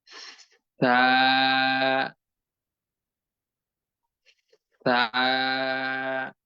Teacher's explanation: জিহ্বার আগা সামনের উপরে দুই দাঁতের আগার সঙ্গে আলতোভাবে যুক্ত করে দিয়ে ভিতর দিক থেকে বাহিরের দিকে ধীরে ধীরে আস্তে আস্তে বাতাস বের করে পরবর্তীতে সম্পূর্ণ অক্ষরটি উচ্চারণ করতে হবে।